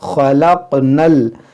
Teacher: इस नून को लाम से मिलाएंगे